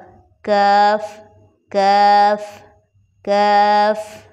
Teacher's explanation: باریک قاف میں ہماری زبان سخت تالو کو ٹچ کرتی ہے یعنی موٹے قوف کی بنسبت تھوڑا سا اگے منہ کی طرف